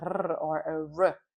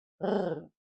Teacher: So here we have a R, but not a strongly rolled R, as in other languages. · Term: soft throat sound